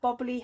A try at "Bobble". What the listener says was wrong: It's Bobble. Silent E. You said Bobbly Hat.